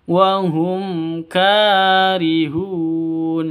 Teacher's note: mim mati bertemu dengan Kaf jelas terang izhar syafawi mim matinya jelas kafnya juga jelas